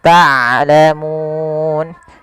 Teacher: Harusnya dia ain dari tengah tenggorokan kita, dan ain punya sifat bainiyah. Di antara syiddah dan rokhawah tidak dialirkan suaranya dan tidak terlalu ditahan suaranya, tapi di tengah-tengah di antara keduanya.